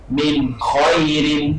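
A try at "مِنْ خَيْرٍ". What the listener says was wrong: Dan min khairin, alifkan sedikit. Min khairin,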